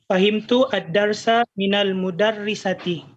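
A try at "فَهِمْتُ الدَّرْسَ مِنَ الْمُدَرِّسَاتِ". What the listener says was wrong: Mudarrisati, bukan mudarrisati. Mudarrisati. Jadi panjang ya, mudarrisati, bukan mudarrisati. Jadi fahimtu ad-darsa minal mudarrisati.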